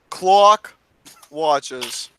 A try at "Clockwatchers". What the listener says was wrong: CLAWWWK. You You sound like you're saying cock watchers.